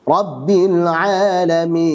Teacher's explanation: tengah lidah tidak dinaikkan ke atas sehingga suara i tidak sempurna, mirip e